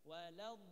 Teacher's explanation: Do itu ada namanya istitalah, suara yang memanjang. Jadi kayak suara ketahan tapi panjang. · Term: sifat istitalah